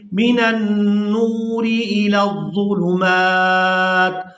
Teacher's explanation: وقف کی صورت میں تا کو ساکن کر دیں گے، میم کو کھڑی زبر کی وجہ سے کھینچتے ہوئے تا ساکن کے ساتھ ملائیں گے